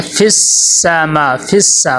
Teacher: فی السما، فی السا فا کو سین میں داخل کریں گے، سین میں ٹھہراؤ پیدا کرنا ہے اور ذرا سا اور سختی پیدا کرنی ہے